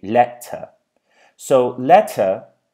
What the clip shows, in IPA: 'leʔtə